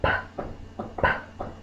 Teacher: from Poison p o z the first sound is p p my lips are closed and I pop the air